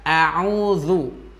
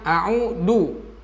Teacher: makhraj zal adalah ujung lidah menempel ke ujung gigi seri. Gigi seri yang atas ya, nanti bisa di zoom oleh moderator. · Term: huruf zal